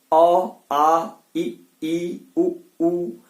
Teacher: अ, आ, ई, उ, सीधे वायु बाहर निकल आती है, जिह्वा किसी स्थान का स्पर्श नहीं करती है। आप बोल के देखिए, अ, आ जब बोल रहे हो तो मुंह पूरा खुलता है और वायु सीधे बाहर आती है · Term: स्वर